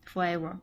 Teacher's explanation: that soft lazy sound in forever. It shows up in unstressed syllables and is super common in English